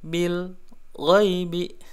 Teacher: Alladzina yu'minuna bil ghaibi, bil di sini ada alif lam al-qamariyah, dibaca jelas ya lamnya, hati-hati jangan sampai memantul bil. Nah, jangan begitu ya, bil ghai, atau jangan juga ditahan terlalu lama bil ghai, atau jangan juga terputus bacanya, tertahan ya, bil ghaibi.